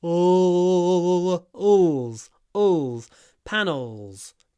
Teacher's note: try to get this dark l at the end